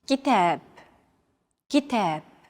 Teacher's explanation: Notice that the second syllable is stressed. It's pronounced longer and louder, while the first and final syllables are shortened.